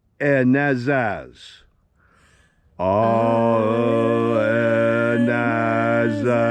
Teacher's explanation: I tend to slightly alter the alpha so it's pronounced a little bit more nasal, a little bit more like ah.